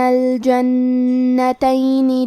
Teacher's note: کلمت الجنتین میں حرف النون کے تشدید کو ظاہر کریں گے اور اسے 2 حرف کے برابر پڑھیں گے